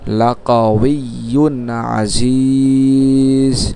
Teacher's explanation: মদের হরফের পর থামার কারণে 3 আলিফ টানবো।